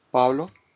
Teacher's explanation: a path of air is expelled after the lips are separated in Spanish we hold back the air avoiding the pop that is heard in English